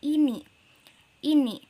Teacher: ih disini tidak tertahan oleh konsonan selanjutnya Jadi ia termasuk kedalam syllable terbuka